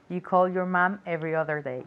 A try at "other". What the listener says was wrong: You call your mum every other day. Okay, remember the pronunciation of other. It's as if it were an A at the beginning, not an O. Okay, other, other. Okay, and remember the V is moving your vocal cords. Other.